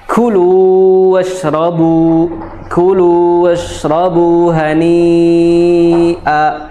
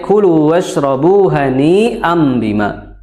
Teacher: Hani panjangnya 4 atau 5 harokat, ya. Di sini dihukumi sebagai mad wajib, ya.